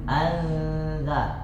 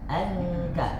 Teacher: kita bacakan Nun saja yang sukun an pasti melewati hidung apalagi kalau sudah ketemu dengan huruf setelahnya nah tetap lewatnya hidup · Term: ikhfa